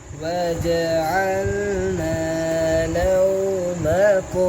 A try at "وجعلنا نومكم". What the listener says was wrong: आपने अल लाम क्लियर नहीं किया